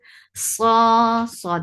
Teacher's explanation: Sa is heavy and make it 2 counts long.